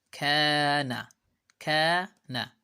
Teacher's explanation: kaf making stretching sound and nun making short a sound because kaf has a mad alif, nun has just short vowel fatha.